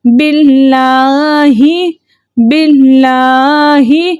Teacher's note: اللہ کے لام سے پہلے زیر تھا اس لیے ہم نے اس لام کو باریک پڑھا۔ ہم پڑھیں گے باللہ، باللہ، لام کے اوپر کھڑا زبر ہے اس لیے ہم نے اس کو 2 حرکت کی مقدار کھینچ کر پڑھا، ٹھیک ہے۔